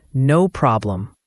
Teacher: Notice the clear O in no. For problem, the O sound is like in hot, and the M at the end is clearly pronounced, closing your lips.